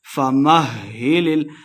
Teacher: ہا مشددہ، میم کو ہا کے ساتھ ملا کے پڑھیں گے